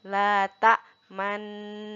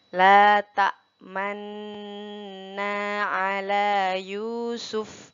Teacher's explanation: Pada kata man, lanjutkan dengan mencucukkan bibir atau memonyongkan bibir. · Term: ishmam